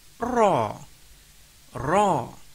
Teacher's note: The letter of ra that is with sabdu then read fathah with a thick sound, that is tafkhim